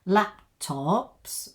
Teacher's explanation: we're going up at the end a little bit because we haven't finished the sentence